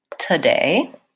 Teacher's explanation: And in this word, the stress is on the syllable day that has the clear vowel A. And the first syllable is an so it sounds like today, with short and reduced vowel And so I will often hear people saying this word more like today with a clear oo.